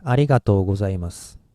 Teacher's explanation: it ends with su and s is voiceless sound so we have to stop here and start another in short